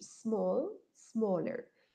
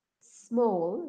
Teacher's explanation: no pronunciamos la E al inicio de la palabra